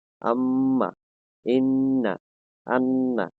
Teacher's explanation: আর নাকের বাঁশি হইতে গুন্না উচ্চারিত হয়